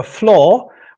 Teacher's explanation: In the less prestigious storehouses, people would prefer the variant without a post vocalic R. So they would prefer flaw.